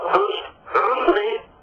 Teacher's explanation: The word itself, usri, comes from the back of the throat, ayin.